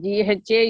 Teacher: aspirated one you have to breathe out or you are throwing air from inside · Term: mahaprana